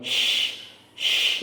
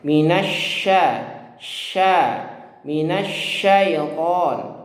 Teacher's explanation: Sifat tapashi itu artinya karena dia makhrajnya di tengah lidah, ini hampir menempel ke langit-langit atas, tapi masih ada ruang sedikit sehingga bertiup ya, atau mengalir angin yang kencang dalam mulut. Nah, itu namanya tapashi ya.